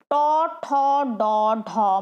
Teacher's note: জিভ কিন্তু আরেকটু গুটিয়ে গিয়ে ভেতর দিকে লাগছে। ওই জায়গাটা, যে জায়গাটা আমাদের জিভটা স্পর্শ করছে, সেটাকে আমরা বলি মূর্ধা। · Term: মূর্ধন্য